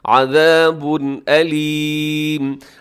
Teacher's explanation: عذاب کے آخر میں تنوین ہے اور آگے حمزہ آ رہا ہے، تو یہاں آپ سمجھ گئے ہوں گے کہ یہاں پر اظہار حلق ہی ہو رہا ہے، یعنی ہم نے غنہ نہیں کرنا، تیزی کے ساتھ پڑھ دینا ہے